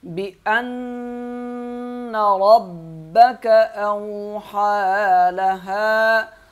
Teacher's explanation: را کو موٹا پڑھیں گے، با کو سخت پڑھیں گے کیونکہ اس کے اوپر تشدید ہے